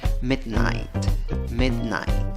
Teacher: La primera sílaba, contando de izquierda a derecha, es la sílaba que lleva la fuerza de voz.